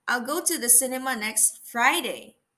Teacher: let us put the stress on the word next · the stress is located on the word Friday okay so I am emphasizing that I am going to the